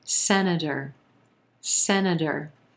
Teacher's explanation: three syllables here emphasis on the first syllable and the as in red vowel sound very quick schwa second